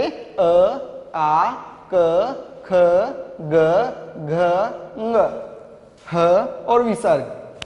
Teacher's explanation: कंट्य अर्थात अ, आ, क, ख, ग, घ, ङ, ह और विसर्ग, इन सब वर्णों का उच्चारण स्थान कंठ है।